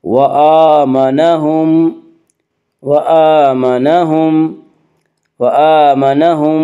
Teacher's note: من جوع آمنہم، حمزہ کے اوپر کھڑا زبر ہے، کھڑا زبر کو ایک الف کے برابر کھینچ کر پڑھیں گے۔